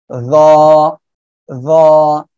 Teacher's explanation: জিব্বার আগা, সামনের উপরের দুই দাঁতের আগার সঙ্গে লাগিয়ে একটু মোটা আওয়াজে উচ্চারণ হবে, র র এমন ভাবে হবে।